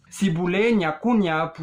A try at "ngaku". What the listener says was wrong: Ngaku, not nya. Ngaku.